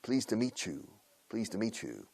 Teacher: Fonéticamente lo enlazamos con y suena una che, chu, como chufla, chu, enchufe.